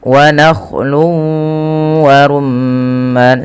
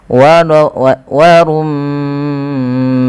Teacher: Apabila ada mim berharakat tasydid, bisa dipastikan dia bacaan gunnah. Cara membacanya adalah menahan suara bunyi gunnahnya atau suara bunyi nya sepanjang 2 harakat. Wa rumman baru dilepas.